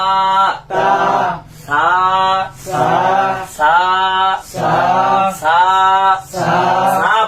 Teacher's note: বলার সময় দুই দাঁতের তথা উপরের দাঁত আর নিচের দাঁত, এই দুই দাঁতের মাঝখান দিয়ে কেমন জানি জিহ্বা বের বের হয়ে যাবে যাবে ভাব, হবে না। বের হয়ে যাবে যাবে ভাব, কিন্তু বের হবে না।